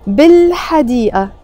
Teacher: I'm not pronouncing it B and then pausing إل and then حديقة. No, we use a liaison.